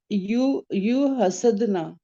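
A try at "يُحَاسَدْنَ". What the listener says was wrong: आपने ना बाबे मुफाअला का अलिफ खा गए हो। हा की आवाज थोड़ी लंबी निकाल लो ना,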